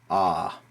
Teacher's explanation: it's always pronounced ah always long as in Father ah it's never a or a it's always ah ah the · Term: letter A